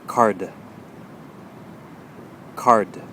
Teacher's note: when you produce the d sound of course the tongue is going to touch the top just briefly